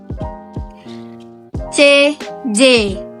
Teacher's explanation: Selanjutnya ada palatal. Hambatan terjadi di lidah dan langit-langit keras.